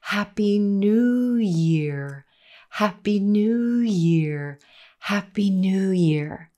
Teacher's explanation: The word new is our focus word in this phrase, and we spend the longest time on that blue moon vowel in order to get a natural rhythm.